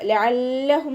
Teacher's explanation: മഹ്റജ് തൊണ്ടയുടെ മധ്യഭാഗം ഹംസയുടെ സൗണ്ടായി പോവാതെ നോക്കുക.